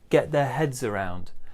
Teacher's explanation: stress on get big stress on heads